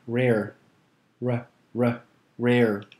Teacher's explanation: the letter r is a soft r that's pronounced it's slightly rolled or trilled